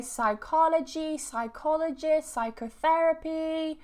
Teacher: whenever you have this psi at the beginning, we never pronounce the P